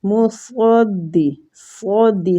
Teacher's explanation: صدی نہیں کہنا، سین کی طرف نہیں اس کو لے کے جانا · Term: مستعلیہ